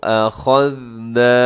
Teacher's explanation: अख़ज़ना में खा अपने मोटा पढ़ना है और आगे ज़ाल को बारीक भी पढ़ना है, इसमें सीटी भी ना हो। अख़ज़ना, ना को थोड़ा सा लंबा कीजिएगा क्योंकि ना को थोड़ा सा लंबा कीजिएगा क्योंकि इसमें अलिफ है नून के साथ, तो आपने इसको लंबा करना है।